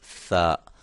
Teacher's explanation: اس کو تا، ثا، اس کو ہم کیسے ادا کریں گے؟ ہم اس کو زبان کی جو نوک ہے اس کو اپنے سامنے والے 2 دانتوں کے کنارے سے لگائیں گے، تو وہاں سے ثا جو ہے وہ ہم ادا کریں گے۔